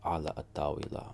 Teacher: Now al tawila, the L sound goes away.